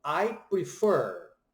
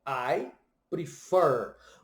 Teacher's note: a sílaba tônica dessa palavra é a última, prefer. Quando se tem duas sílabas em inglês, raramente você vê alguma coisa que a segunda sílaba é a sílaba tônica.